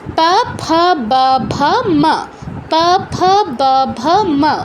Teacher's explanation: এগুলো হচ্ছে আমাদের উষ্ঠ এবং অধর, এই দুটো ওঠানামা করে উচ্চারণগুলো করতে হয়। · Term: উষ্ঠ বর্ণ